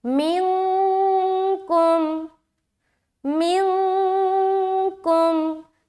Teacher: نون کی آواز کو ناک میں چھپانا۔ جب بھی آپ اخفا کریں گے تو آپ کی آواز مخرج کو نہیں لگے گی، یہ جو زبان ہے نا مخرج کو ٹچ ہوتی ہے وہ نہیں ہوگی، مخرج سے ہٹ کے ہوگی، یعنی کہ زبان کہیں پر بھی ٹچ نہیں ہوگا۔